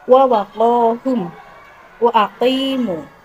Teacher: Bunyi huruf qaf keluar dari pangkal lidah dekat kerongkongan, dihimpit ke langit-langit mulut bagian belakang.